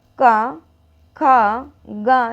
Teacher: सबसे ज़्यादा प्रेशर कहाँ पड़ रहा है, कंठ में पड़ रहा है ना